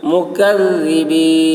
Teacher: کاف کی آواز باریک اور ذال کی آواز باریک ہوگی